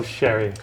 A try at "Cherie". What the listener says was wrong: It's Cherie, and the emphasis is on the last syllable.